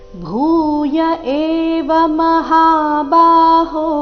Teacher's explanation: ಭೂಯ ಭೂ ಮಹಾಪ್ರಾಣ ದೀರ್ಘದೊಂದಿಗೆ ಪ್ರಾರಂಭ ಆಗ್ತಾ ಇದೆ